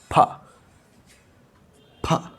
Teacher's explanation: So when you produce pa sound, so suddenly the air comes out. Okay, it's like an explosion. So suddenly the air is blocked and released.